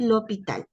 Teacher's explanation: La H como es muda, no es aspirada, entonces toma el sonido de la LI, LO, LA.